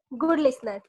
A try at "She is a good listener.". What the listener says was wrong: She is a good. का बाद रुको मत. She is a. Then you are thinking ऐसे मत रुको. She is a good listener. If you find the sentence long, a good listener. का बाद मत रुको. She is का बाद थोड़ा रुक सकता है. She a good listener एक साथ होगा.